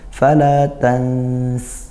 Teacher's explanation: Jadi keluarnya dari sela-sela itu. Nama sifatnya sofir ya, keluar desisan kuat dari sela-sela gigi.